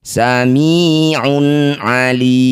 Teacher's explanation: Dhammah tanwin bertemu ain disebut bacaan namanya idhar halqi. Baca jelas dhammah tanwinnya un tanpa berdengung.